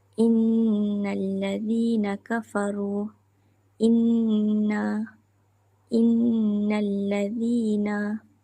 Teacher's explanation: Cara bacaan adalah wajib dibaca dengan dua harakat. Jadi bila kita baca, kita kena memanjangkan dengung dengan kadar dua harakat. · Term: nun syaddah